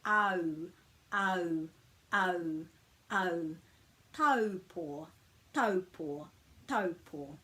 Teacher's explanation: But of course we don't say ta, u, paw. We glide these together so it's au, au, au, au. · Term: vowel blend